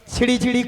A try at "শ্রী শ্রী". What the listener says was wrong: মাসি, নামগুলো ঠিকঠাক করে বলো। আরে মাসি, ওনার নাম ছিরি ছিরি নয়, বলো শ্রী শ্রী, বলো শ্রী শ্রী। হ্যাঁ বলো শ্রী শ্রী।